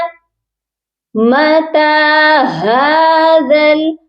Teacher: ہا کی آواز سینے والے حلق سے آئے گی، زال کو نرمی سے پڑھا جائے گا اور زال کو لام کے ساتھ ملا کر پڑھیں گے.